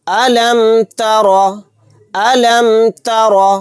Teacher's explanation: را کو موٹا یعنی پر پڑھنا ہے کیونکہ را کے اوپر زبر ہے۔